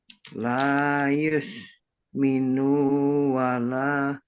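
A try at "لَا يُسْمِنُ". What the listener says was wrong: Minu pendek. Minu pendek. La yus minu wala.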